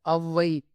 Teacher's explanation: சொல்லுக்கு முதலில் மட்டுமே வரும் ஔகார குறுக்கம் 1 1/2 மாத்திரை அளவினதாய் குறைந்து ஒலிக்கும்.